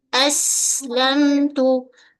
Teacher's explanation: pada lam tepi hujung lidah menyentuh pada gusi gigi atas